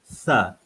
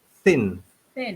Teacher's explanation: Nak sebut tha, lidah mesti tha di antara dua gigi, di hujung lidah saja, tak perlu banyak sangat, sikit saja. Tha, dan hembuskan angin keluar.